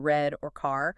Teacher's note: A huge one is the English R sound, the retroflex, like in red or car. Right. For a speaker whose native language uses a vibrant rolling R trill or maybe a quick tap R, the English version is just baffling. · this sustained, almost growling sound where the tip of your tongue never touches the roof of your mouth